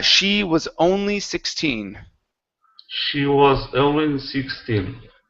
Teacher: You added an H here, saying was honly. Okay, remove that H. It's she was only 16.